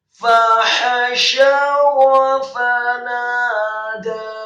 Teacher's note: ha-nya juga dibaca tipis, nyaring keluar dari tenggorokan bagian tengah, fathah satu harokat